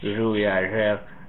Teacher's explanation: You might hear a retroflex version